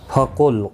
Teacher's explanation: قاف مستعلیہ ہے، پر پڑھا جائے گا، لام ساکن کو ہلانا نہیں.